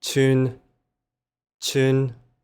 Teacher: This is the high flat tone, and it means a stream.